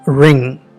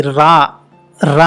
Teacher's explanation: తెలుగు లేకపోతే ఇండియన్ యాక్సెంట్లో ఈ రా, రా అనేటువంటి పదము శబ్దము మన నాలుక ఫ్లాట్గా ఉండి ఆల్వియోలర్ రిడ్జ్కి టచ్ అవుతుంది. బట్ అమెరికన్ యాక్సెంట్లో కానీ మోడర్న్ బ్రిటిష్ యాక్సెంట్లో కానీ నాలుక వెనకకి మడతబడి ఆల్వియోలర్ రిడ్జ్ వెనకాల ఉండి మనం దీన్ని ప్రొనౌన్స్ చేస్తాం. అలాగా ఈ సాఫ్ట్ ఆర్ అంటానమాట. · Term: సాఫ్ట్ ఆర్ సౌండ్